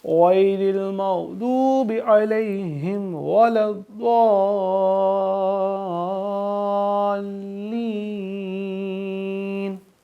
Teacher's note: اور ضاد پہ مد، اس کو ہم 3-4 الف کی مقدار پہ کھینچ کے پڑھیں گے، یعنی کہ لمبا کر کے پڑھیں گے۔